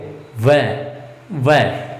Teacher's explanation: व देखो, व का जो उच्चारण स्थान है, हम व का जब उच्चारण करते हैं तो हमारे ऊपर वाले दांत नीचे वाले होठ को छूते हैं, तब हम व का स्पष्ट उच्चारण करते हैं। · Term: दंतोष्ठ